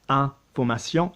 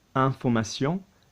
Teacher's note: like information, notice I'm still very nasal, information